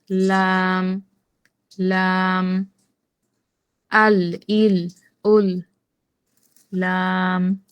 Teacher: এই হচ্ছে লাম। জিহ্বার আগার কিনারা সামনের উপরের দাঁতের গোড়ার সঙ্গে লাগাইয়া উচ্চারিত হয় লাম।